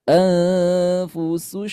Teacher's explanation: Ketika laf kita melafazkan ini bunyinya terputus ya. Bunyinya harus tetap mengalir karena ha itu punya sifat sifat rukhawah juga.